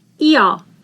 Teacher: IH is pronounced as long E and H is not pronounced.